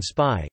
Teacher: a stop after an s, as in spy, is tenuis (unaspirated)